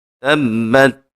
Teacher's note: با مشدد ہے، با کے اوپر خوب سختی کریں گے